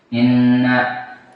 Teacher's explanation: nun musyaddadah wajib gunnah